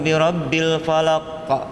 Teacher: Qaf kalau mati di hujung tendang qaf. Dia tak banyak ba qaf. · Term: qalqalah